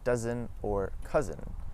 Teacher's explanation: The s in between two vowels as well as the zed sound make a z